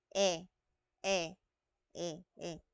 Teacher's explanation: Samantalang yung E na malambot, ang dila natin ay nasa gitna. Okay, nasa gitna pero nasa harap.